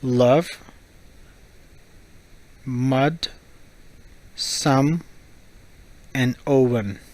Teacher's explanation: Okay, when O is pronounced as an UH sound, your mouth is open slightly and the back of your tongue is up towards the roof of your mouth near your throat, and the sound is short